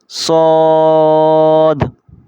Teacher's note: صاد، سیٹی کی آواز نکال کر موٹا کر کے پڑھا جائے گا